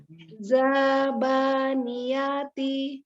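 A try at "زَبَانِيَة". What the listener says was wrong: Enggak, zanya pendek Umi. Zabaniyati.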